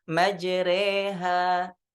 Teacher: Ini di riwayah Hafs itu dengan imalah. Dibaca majreha ya.